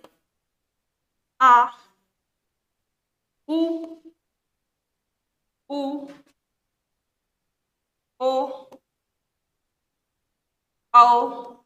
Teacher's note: जीभ का पिछला भाग काम करता है यानी कि यह वाला जिन स्वरों के उच्चारण में जीव का पिछला भाग काम करता है उन्हे पश्च स्वर कहते हैं